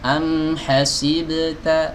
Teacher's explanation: Huruf ba tatkala diqalqalahkan, qalqalahnya harus dibaca tipis. Am hasibta, bukan am hasibota, hasibo, hasibo.